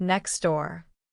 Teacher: Another common example is when words end with T sounds. In next door, that T often disappears.